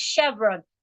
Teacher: r Chevron CH h v r o n is pronounced Chevron the ch there sounds like sh